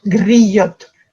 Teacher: en Bourgogne, il y a un petit accent local, il roule le R